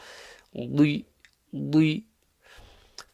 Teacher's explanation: Dad at the end is the tricky one. It's got to be read full mouth and with a kasra.